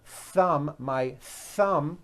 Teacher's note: has a TH sound, where your tongue comes out between your teeth